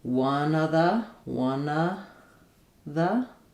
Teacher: I can keep my v or we might sometimes lose that which would sound like one of the one of the.